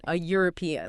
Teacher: Starts with an E, but your mouth makes a Y sound.